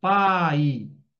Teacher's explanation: o som vai do forte para o fraco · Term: ditongo decrescente